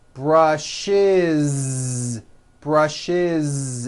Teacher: I brush he brushes brushes it's a voiced ending